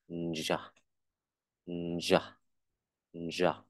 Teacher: mình chỉ đặt cái lưỡi và chuẩn bị nói âm đờ thôi, nhưng không không nói âm đờ mà mình nói sang âm r luôn. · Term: âm đờ r